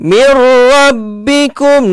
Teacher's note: Nun mati bertemu dengan ra. Idgham bila gunnah. Jangan dengung, kita hanya idghamkan sahaja.